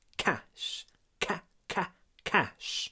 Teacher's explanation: Здесь у нас есть звук между двумя глухими согласными, поэтому он такой неполноценный.